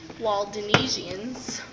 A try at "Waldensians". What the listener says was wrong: Walden. There's no E, it's Walden. Waldensians.